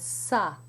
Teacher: In the first syllable, you have a sa, which may sound to you like the sa in sat, but it's more open. The a sound in English, as in sat, does not exist in French.